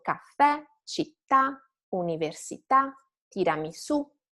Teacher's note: You can visualize your intonation like a wave that starts slow and stay flat and then rise at the end.